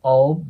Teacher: 舌の▁L▁の動きを活かしたまま、そのまま▁the▁の音に移動します。